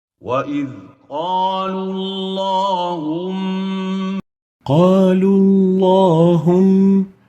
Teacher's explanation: We don't say Allahum, but we say Allahum, where the lam of Allahum has to have tafkheem due to the dhamma and the waw before it.